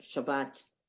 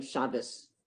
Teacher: the one without the dot in sephardic hebrew you still pronounce like a t